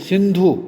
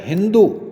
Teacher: महाप्राणीकरण के विपरीत जब शब्द में विद्यमान कोई महाप्राण ध्वनि बाद में अल्प प्राण हो जाए, जैसे सिंधु, सिंधु में ध महाप्राण है लेकिन इससे बन गया हिंदू, द हिंदू में द अल्प प्राण है। इसी प्रकार भगिनी से बहिन का बन जाना, भय का बै बन जाना एक प्रकार से अल्प प्राणीकरण का उदाहरण है।